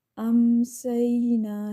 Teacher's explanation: امسینا، سین زبر یا سی، یا لین ہے، یا ساکن سے پہلے زبر ہے تو یا لین کا قاعدہ ہو رہا ہے، نرمی سے ادا کرنا ہوتا ہے، ایک الف کی مقدار دیتے ہیں